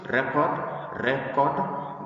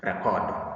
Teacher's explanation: we have the first syllable stressed to give us a noun. Then the second syllable stressed to give us a verb